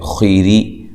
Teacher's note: خیر، اچھا یہاں اب دیکھیں وقف کی صورت میں را باریک ہو جائے گی، ٹھیک ہے، یعنی کہ وقفاً وصلاً را کو باریک پڑھیں گے، خا کو موٹا کریں گے۔